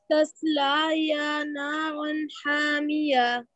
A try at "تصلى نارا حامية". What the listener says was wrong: This is not يا. That's to make لا long. تصلى نارا حامية or حامية if you want, okay?